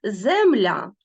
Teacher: другий склад буде наголошеним і відкритим тому що земля а закінчується голосним ну про це ми більш